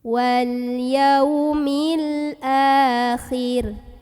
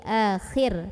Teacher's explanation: Karena kalau ada ro sukun, kita harus lihat huruf sebelumnya. Karena huruf sebelumnya barisnya di bawah, maka ro-nya tipis, tarqiq.